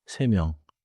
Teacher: 명 begins with 미음. So 세 명 should not have a hard stop between 세 and 명